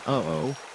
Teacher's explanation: The Phoenician letter Aleph, which represented a glottal stop, that little catch in your throat in uh-oh